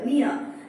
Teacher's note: நம்ம ப்ராப்பரா ப்ரொனௌன்சியேஷன் பண்ணும் பொழுது நியர் நியர் அப்படின்னு நம்ம சொல்ல மாட்டோம் நியர் ஆர் சவுண்ட் முழுசா வரக்கூடாது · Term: டிப்தாங்ஸ்